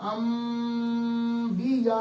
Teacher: نون کی آواز کو میم میں بدل دیتے ہیں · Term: اقلاب